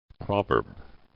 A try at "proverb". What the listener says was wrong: Proverb. Proverb. Proverb.